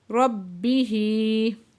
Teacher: با مشدد ہے، سختی سے پڑھیں گے، ہا کے نیچے کھڑی زیر ہے، 2 حرکت کھینچ کے پڑھیں گے۔